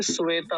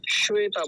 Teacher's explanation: श तालू से इसका उच्चारण होता है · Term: तालव्य सकार